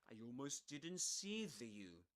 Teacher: he drops the t sound, the t in the word uh didn't. He doesn't say didn't, but didn't.